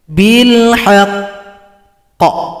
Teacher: Setiap qof yang tasydid atau huruf qalqalah cara berhentinya disukunkan. Kemudian tunggu dua ketukan baru dipantulkan.